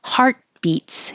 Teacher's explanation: you won't hear that t your tongue goes to the T